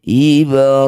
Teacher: Kemudian dihentikan disebut bacaan mad arif disukun. Cara bacanya hi ini kita tambah panjangnya jadi 6 harokat. Kemudian huruf terakhir, huruf mim ini kita sukunkan.